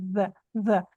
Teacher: Na verdade, é um D no meio dos dentes.